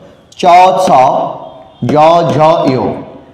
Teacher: চ ছ জ ঝ ইয়, তালুতে লাগে বলে তালব্য ধ্বনি